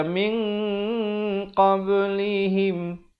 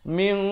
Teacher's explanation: Ikhfa di sini dibaca tebal, dua harakat. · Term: ikhfa yang tebal